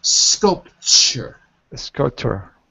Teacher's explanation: the T in sculpture sounds like a CH